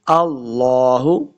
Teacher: یہ جو لفظ اللہ کا لام ہے نا اس کو موٹا کر کے پڑھیں گے. اللہ پر پڑھنا ہے، یعنی کہ اللہ ہا کو لفظ کے ساتھ پڑھیں گے اور وقف کریں گے تو ما شاء اللہ ہا کی آواز آئے گی.